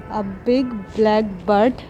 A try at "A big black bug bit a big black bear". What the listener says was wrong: नहीं बर्ड नहीं, बग।